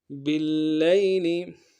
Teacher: با کو لام کے ساتھ ملانا ہے، لام کے اوپر تشدید زور دیں گے اور لام کو یا کے ساتھ ملانا ہے، یا لین بغیر